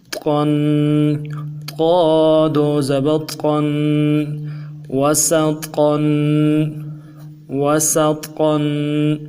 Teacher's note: تنوین کو غنّے کے ساتھ 1 الف کی مقدار میں کھینچ کے پڑھیں گے